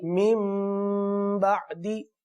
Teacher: सही ना, क्योंकि कायदा ये है कि नून साकिन के बाद बा आ गया तो नून साकिन को मीम से बदलना है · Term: इक़लाब